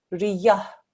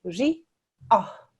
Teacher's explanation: Make sure that there's no ya that you put in between.